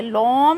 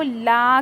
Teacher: बारीक पढ़ेंगे, लॉम नहीं करेंगे, लॉ नहीं करेंगे, लाम को ला करेंगे।